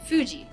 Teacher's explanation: it sounds like f in english but it is made without biting the lower lip like you were blowing out a candle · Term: japanese f sound